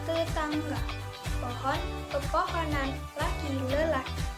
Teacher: mengalami pelemahan bergeser ke posisi tengah menjadi e epet atau e lemah.